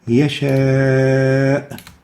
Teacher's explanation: The vowel is the alif, as in yasha. In yasha, we'll find that there is a mad letter, the a, followed by the hamza in the same word. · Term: attached mad